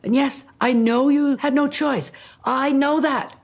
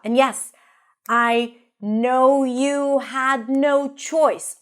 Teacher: Almost every word is stressed here because it's such a powerful sentence